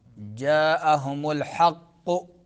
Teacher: हक़्क़ु क़ाफ को ऊपर पढ़ेंगे। जा में मद होगा, मद कौन सा?